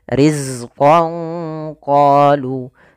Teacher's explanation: Riz ini sempurnakan daripada sifat Za yaitu salah satu sifatnya adalah sifat jaharnya tertahannya nafas tapi mengalirnya suara yaitu sifat rakhawahnya